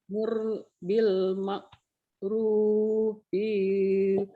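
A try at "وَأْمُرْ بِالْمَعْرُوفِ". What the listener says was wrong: B pendek. Bukan panjang jadi ketukar. Bil ma'rufi. Kenapa panjang?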